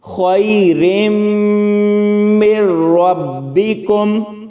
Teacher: میم کو را کے ساتھ ملائیں گے، نون ساکن چھوڑ دیں گے اور یہاں پر سختی سے ملایا جائے گا